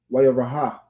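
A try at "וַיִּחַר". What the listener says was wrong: Wara. No, it's not. No ha. Wara'a.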